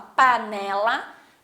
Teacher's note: Panela, observem que o né, ele não tem acento, mas é fácil da gente perceber que quando a gente fala panela, o né, ele se destaca, ele fica mais forte